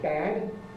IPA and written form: bæd (bad)